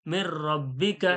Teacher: direct জুড়িয়ে পড়ে দিতে হবে বিনা গুন্নায়